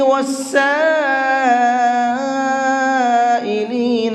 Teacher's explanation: یہاں پر یہ بڑا مد ہے تو اس کو 4 سے 5 الف کے برابر کھینچ کر کے پڑھیں گے۔ وفی الرقاب، قاف کو پر کر کے پڑھیں گے۔